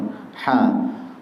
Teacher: jangan pakai ha yang tebal tapi Ha Ada nafas yang keluar